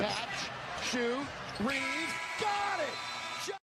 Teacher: The pattern is like you have a pitch and it just kind of goes up, up, up, up, up.